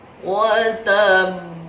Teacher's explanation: Ada huruf qalqalah berada di akhir kalimat, namanya qalqalah kubro, jadi besar, sangat memantul.